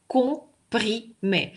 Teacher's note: Даже если здесь вы увидели М и вы протранскрибировали, это М не произносится.